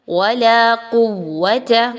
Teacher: ہونٹوں کو گول کرنے سے صرف واو کی ادائیگی رکھنی ہے.